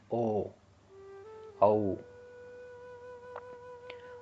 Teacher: ओ बोलेंगे तो आपका होठ टच होगा ही होगा, और कंठ से भी आवाज आती है